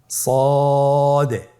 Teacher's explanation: জিহ্বার আগা, সামনের নিচের 2 দাঁতের পেট ও আগার সঙ্গে লাগিয়ে উচ্চারিত হয়। তাহলে আপনারা জিহ্বার আগা, সামনের নিচের 2 দাঁতের পেট ও আগার সঙ্গে লাগিয়ে উচ্চারণ করুন সদে। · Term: সদ হরফের